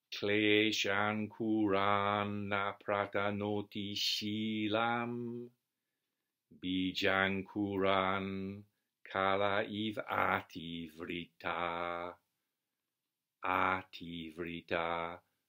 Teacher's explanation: the last 4 syllables of each pada are dum da dum dum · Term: upajati meter